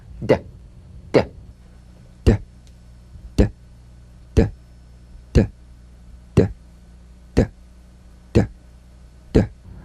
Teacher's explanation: Voiced tongue front palatal stop consonant. Play this D drum beat on the springing away of the tongue from the upper gum ridge. Feel a pulsation in the tongue. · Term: drum beat D